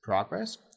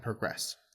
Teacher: when it's a noun it's progress with stress on the first syllable but when it's a verb it's often pronounced as progress which is um stress on the last syllable